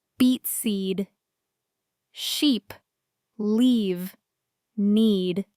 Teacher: The long E. This sound is longer. You should smile a little when you say it. Hold the sound. Okay, stretch it a bit.